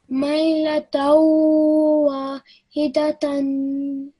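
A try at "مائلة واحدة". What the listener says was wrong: Excellent. Well done. Really nice read.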